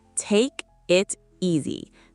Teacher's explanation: The K flows into the I. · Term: linking